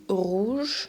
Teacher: to write the word here is a voiced ular frickative sound it's produced at the back of the throat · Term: French r